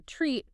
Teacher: In many languages, that kind of three-consonant cluster doesn't exist. So learners might drop the es and say treat, or add a vowel and say a street